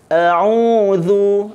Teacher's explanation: Alif ini mesti ditarqiqkan kerana huruf alif ini bersebelahan dengan huruf ain. Yang mana huruf ain ini sifatnya adalah mutawassit, kan?